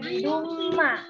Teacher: dia memasukkan bunyi nun mati atau tanwin ke dalam huruf mim. Kayak jadi biduma. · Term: Idgham